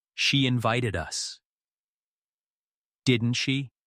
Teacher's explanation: Make the invite, ed, crisp, then float up on, didn't she?